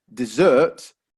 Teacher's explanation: Desert. However, if we stress the second syllable, dessert, then suddenly we have something that you eat after you finished your dinner.